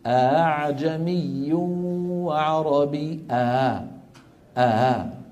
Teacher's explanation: ما بيقفل الوترين بيترك بينهم فجوه بسيطه يتسرب الصوت منها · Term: تسهيل الهمزه